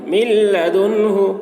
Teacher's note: یہاں پر نون کو نہیں پڑھیں گے، میم کو لام سے ملا کر پڑھیں گے